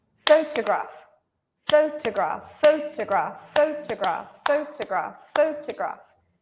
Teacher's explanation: So you can hear by the claps that this first syllable is very long. The second 2 syllables are much shorter.